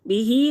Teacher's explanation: बिही हा खड़ी देर, हा उल्टा पेश, हा खड़ी ज़बर को एक अलिफ के बराबर खींच कर पढ़ेंगे